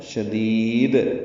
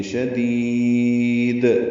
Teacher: پہلی دال کو لمبا کر دیں گے، یا مدہ ہے، اور اس کے بعد دوسری دال پہ وقف کریں گے تو قلقلہ کریں گے. شدید لمبا کر کے وقف کریں گے.